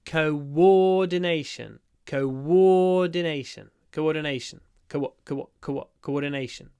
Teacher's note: Listen carefully to what happens with the OO at the beginning. It's like go, coordination. Co-war. There's a w.